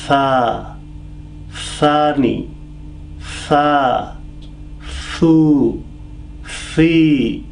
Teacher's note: When we say Tha, my tip of the tongue comes out in between two rows of teeth, and then light, mild sounds come out